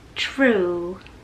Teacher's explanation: 这个▁r▁的音出现了，舌尖就会嘚儿翘起来，导致了这个舌位的变化 ，然后呢音就会产生变化。下一个组合，第一个鞋子这个音就是▁shoe。好，下一个对应的音是▁shrew。好了，最后一个组合，第一个犹太人▁Jew。好了，画的这个过去式是▁drew。好了，这个就是今天视频的全部内容，希望大家喜欢。那么今天视频就到这里，我们下一期见吧，拜。